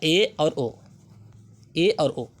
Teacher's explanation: जिन स्वरों के उच्चारण में मुख्य द्वार आधा बंद रहता है वो होते हैं ए और ओ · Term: अर्धसंवृत